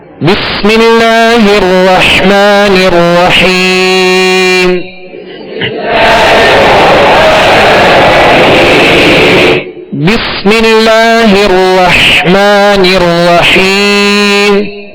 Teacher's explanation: سین کی آواز کو سیٹی کی آواز میں واضح کریں گے، سیٹی کی آواز اس میں پیدا ہوگی۔ بس، اب اس میں سکون ہے تو اس میں کامل سکون ادا کریں گے، اور اسی طرح آگے را جو مشدد ہے اس کو بھی دوہرا پڑھیں گے، اور حا کو واضح پڑھیں گے۔